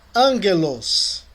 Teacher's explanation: O encontro de um gama com outra gutural é pronunciado como N.